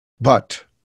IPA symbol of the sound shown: b